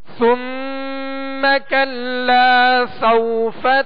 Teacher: سوفا یہاں واو لین ہے، لہذا نرمی کے ساتھ ادا کریں گے